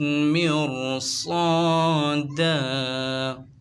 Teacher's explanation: را ساکن سے پہلے زیر آ رہا ہے، را کو باریک پڑھتے ہیں مگر آگے حروف مستعلیہ کا ورڈ آ گیا ہے تو اب را کو موٹا پڑھیں گے۔ مرصاد، الف سے پہلے زبر الف مدہ ہوگا، 2 زبر کی تنوین کو وف میں الف سے بدل دیں گے۔